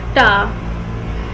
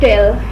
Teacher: It is articulated from blade of the tongue coming in contact with alveolar ridge. It is an alveolar stop as air stream is obstructed before being released. It is an unvoiced consonant as it is produced without vibration of vocal cords.